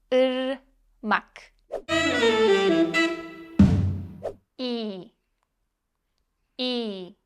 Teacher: this is a close front unrounded flat vowel put your tongue up close to your pallette position it close